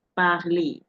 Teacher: And the R is not pronounced in this case, even though the Frenchman doesn't drop his R.